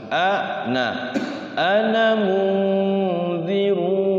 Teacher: Nah, ketika wasal maka tidak boleh dipanjang-panjangin.